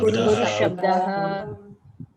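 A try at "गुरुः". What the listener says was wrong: It is Guru, not Guru Shabdaha. Guru. This is short vowel, Hrasva.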